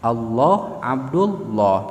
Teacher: Lam yang tafkhim seperti lafaz Allah, sebelumnya harkat fathah atau dhammah, Allah Abdullah, maka lam di sana tafkhim.